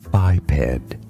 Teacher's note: In English, this word is pronounced as biped. Stress on the first syllable. It's not bipedal.